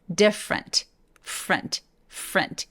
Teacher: 얘도 different라고 하지 않고 두 번째 모음인 이를 사라지게 해서 발음해볼게요.